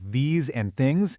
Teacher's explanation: those famously tricky TH sounds in words like these and things, they almost always became a harder D or T sound